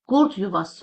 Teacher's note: Qurd yuvası sözündə d samitindən sonra samit gəldiyi üçün burada t kimi tələffüz ediləcək.